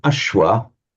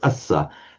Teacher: You get the sh in Sanskrit, becomes, as we know, the s in Pali